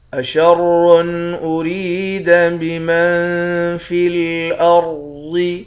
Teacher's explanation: را کو موٹا پڑھیں گے، را کو یا کے ساتھ ملا کر ایک الف کی مقدار کھینچیں گے۔ میم کو نون کے ساتھ ملا کر اخفا کریں گے۔